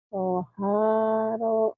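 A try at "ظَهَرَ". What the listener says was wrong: zo, ada titiknya. Zohara, kemudian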